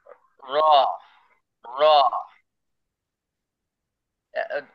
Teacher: জিহ্বার আগার পিঠ তার বরাবর উপরের তালুর সঙ্গে লাগিয়ে